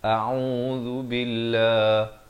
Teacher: A'u di pertengahan kerongkong, beri dhammah 2 harakat. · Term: ain